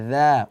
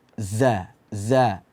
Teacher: makhraj Za itu adalah ujung lidah berada di halaman belakang gigi seri